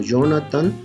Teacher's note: pronunciando la J como Y, puede llevar la sílaba tónica aquí, puede llevarla en tan también.